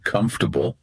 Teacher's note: That middle vowel sound takes a break. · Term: elision